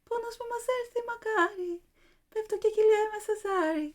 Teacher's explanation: Greek, in contrast, stresses each syllable equally in terms of time. It gives each syllable the same duration. It's ta, ta, ta, ta, ta.